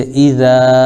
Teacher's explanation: الف مدہ ہوگا، ایک الف کھینچیں گے